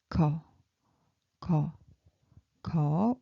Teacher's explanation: this ko sound low pitched and soft, and it's from your tongue. Your tongue block your throat, so it makes ko. And in English equivalent, got, ko.